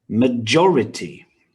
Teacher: has four syllables and stress on the second one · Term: word stress